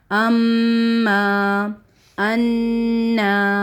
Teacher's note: مشدد word ہے تو غنہ بھی ہوگا کیونکہ مشدد ورڈ میم کے ساتھ آ رہا ہے تو اس میں غنہ ہوتا ہی ہوتا ہے